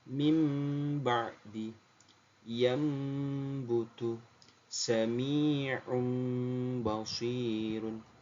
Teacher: nun sukunnya atau tanwinnya dirubah menjadi suara mim